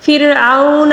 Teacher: واو ساکن سے پہلے والے حرف پر زبر ہے، اس لیے اس کو واو لین کہا جاتا ہے، اس کو نرمی سے پڑھیں گے